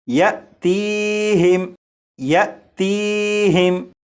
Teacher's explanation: اب یہ حمزہ ساکنہ ہے اور حمزہ ساکنہ کو ہمیشہ جھٹکا دے کر پڑھتے ہیں